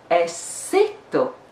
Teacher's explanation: The stress is on the second syllable or on the first syllable of the second word.